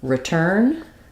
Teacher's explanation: the pronunciation of return is uh stressed on turn and this is pronounced the same as the word turn um